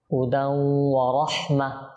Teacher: এখানে দেখুন তানবিনের পর ওয়াও আসছে, ইদগাম গুন্না সহকারে।